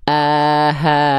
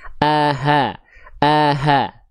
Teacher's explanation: Hamzah dan H besar itu dilafalkan dari tempat yang sama, area yang sama. Dari mana? Dari pangkat tenggorokan di sini ya.